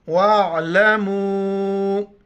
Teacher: میم کے اوپر مد ہے، 4 الف کی مقدار کھینچنا ہے، عین کو گلے سے ادا کرنا ہے، واو عین زبر و، لام زبر ل، میم و مد پیش مو، وَاعْلَمُوا ان اللہ۔